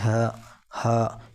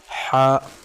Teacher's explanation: بڑا ح ہے، حلق سے نکالیں گے